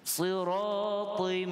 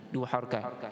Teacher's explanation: Siratim, idgham tanwin bertemu mim, idgham ma'al gunnah. Kita dengung dua harakat pada makhraj khayshum.